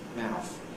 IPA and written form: mæʊf (mouth)